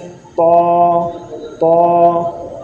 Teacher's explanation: زبان کے نوک اور اوپر کے دانتوں کی جڑ سے ادا ہوتا ہے، جیسے طا، طا۔